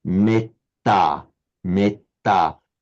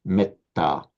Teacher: in Pali, because of that double consonant, it's pronounced with a short e